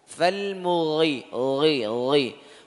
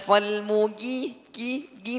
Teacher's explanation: Ghain walaupun pelafatan atau harakatnya kasrah tetap tebal